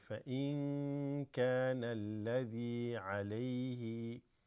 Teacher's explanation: This alif drops, goes to the lam